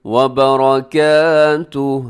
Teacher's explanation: وبرکاتہ اس میں بھی کیا ہے کہ را آپ نے موٹا پڑھنا ہے